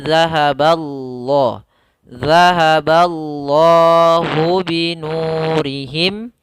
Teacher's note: Pada lafal Allah tebal